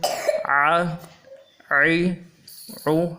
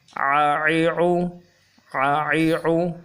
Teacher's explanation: حرکات کے سبق میں آج عین کو ان تینوں حرکتوں کے ساتھ ملا کے آپ کی خدمت میں پیش کریں گے، اور یہ جو عین ہے حروف حلقی میں سے ہے۔ حلق کہتے ہیں گلے کے اندر کا حصہ، تو گلے کے اندر سے اس حرف کو جماؤ کے ساتھ مضبوطی کے ساتھ ادا کریں گے، بغیر کھینچے ہوئے، بغیر جھٹکا دیے ہوئے۔